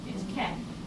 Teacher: We borrow the camp and say campu. And it's spelled in romanization N here, but the pronunciation is M with campu. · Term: M sound